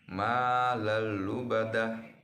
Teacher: Huruf tanwin bertemu dengan huruf lam atau la, maka dibaca dengan lebur tanpa dengung. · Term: idgham bila gunnah